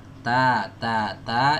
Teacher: Keluarnya dari ujung lidah ketemu dengan pangkal gigi seri atas. Ya, teman-teman bisa bayangkan ujung lidah kita ditempelkan ke pangkal gigi seri atas.